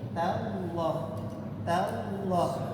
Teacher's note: tallah, tallah, tanya tipis, Allahnya tebal. Kadang-kadang kita ketika ada huruf yang sifatnya tartik, tipis, istifal, ketemu dengan yang tebal, itu yang tipis terpengaruh.